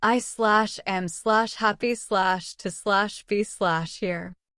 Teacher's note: When he arrived, he smiled and said, "I am happy to be here." His words were correct, but his tone was completely flat. He gave every word the same stress: I/am/happy/to/be/here.